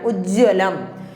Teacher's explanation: ജ ഇരട്ടിക്കണം, വായും കൂടി വരണം.